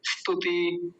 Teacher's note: ई की तो आवाज भी नहीं आती